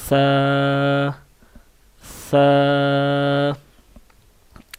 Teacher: یہ زبان کی جو نوک ہے اس کو اوپر والے دانتوں کے ساتھ لگائیں تو یہ لفظ ادا ہوتا ہے